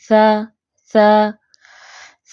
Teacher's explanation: सा की आवाज में पस्ती है बुलंदी नहीं है